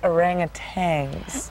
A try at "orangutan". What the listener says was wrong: No, there's no G on the end. That's very common mispronunciation of the word.